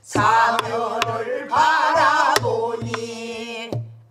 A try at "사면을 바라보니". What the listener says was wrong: 참 잘하셨어요.